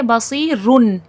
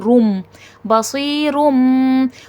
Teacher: تنوین یا نون ساکن کی آواز کو میم کی آواز کے ساتھ ریپلیس کر دینا، بدل دینا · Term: اقلاب